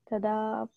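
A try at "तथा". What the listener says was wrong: Tata, not Tada.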